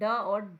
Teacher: कौन सा है मुर्धन्य जो मुर्धा से बोला जाता है और मुर्धा से हम ड और ढ बोलते हैं